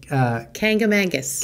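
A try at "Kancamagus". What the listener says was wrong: Kankamangus is what the locals say, but if you actually read it, it's supposed to be pronounced Kankamagus. There's no N in there.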